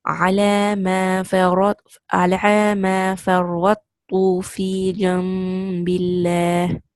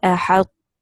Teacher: And that is why what will happen is this is known as incomplete merging. You will not completely merge to the small ta. The heaviness of ta should remain.